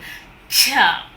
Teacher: So we have complete closure of the plosive, but the release is gradual. Ch. Complete closure and then release. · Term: affricates